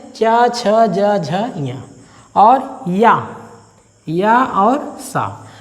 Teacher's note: इनका जो उच्चारण स्थान है वो तालु की छत का पिछला भाग है। जो तालु होता है, तालु की छत का जो पीछे वाला हिस्सा होता है, वही इसका उच्चारण स्थान होता है। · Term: तालव्य वर्ण